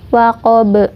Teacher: Kemudian waqab ini sama ya, yaitu qalqalah kubro atau qalqalah yang pantulannya besar karena huruf qalqalahnya ada di ujung, ada di akhir ayat ya. Huruf qalqalahnya yaitu ba, waqab.